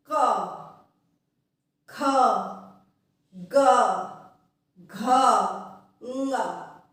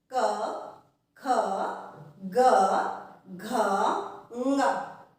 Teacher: क वर्ग के जितने भी वर्ण हैं उनका उच्चारण कंठ से होता है